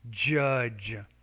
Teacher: you have to make the j with vibration of the vocal folds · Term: jh sound